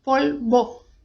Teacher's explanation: E o V tem som de B fraco, polvo. Bom, como se fosse com um Bzinho ali, um B bem sutil.